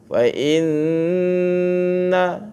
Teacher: Jadi fa inna ni nun syaddah yang diletakkan situ, dia merupakan bacaan yang wajib untuk didengungkan. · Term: wajibul gunnah